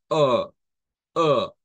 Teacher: es una e en forma de o se le dice porque es como que hagamos la lengua hacia atrás con la mandíbula bastante abierta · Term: a retrocedido